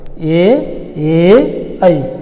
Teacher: ತಾಲವ್ಯ ಅಂದ್ರೆ ಅಂಗಳದ ಮುಂದಿನ ಭಾಗ ಅಂತ ನಾ ಹೇಳಿದೆ. ಆ ಕಂಠ ಮತ್ತು ತಾಲವ್ಯ ಆ ಎರಡೂ ಭಾಗಗಳ ಸಹಾಯದಿಂದ ಉಚ್ಚರಿಸಲ್ಪಡುವಂಥ ಅಕ್ಷರಗಳು ಕಂಠ ತಾಲವ್ಯ ಅಕ್ಷರಗಳು